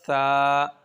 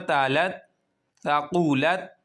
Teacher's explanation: سا کا جو مخرج ہے اوپر اور نیچے والے جو دانت ہیں ان کے درمیان میں زبان کی نوک کو لانا ہے، وہاں پہ زبان کی نوک ٹچ ہوگی تو یہ نکلے گا سا۔